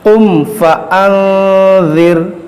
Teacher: یہاں پر اظہار شفوی ہوگا یعنی غنہ نہیں ہوگا